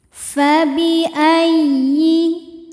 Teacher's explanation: Ya tasydid dibaca dengan nabar, yaitu dengan menaikkan intonasi suara kita.